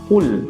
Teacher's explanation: kita baca huruf kaf, kul, ya, dengan pangkal lidah diturunkan ke bawah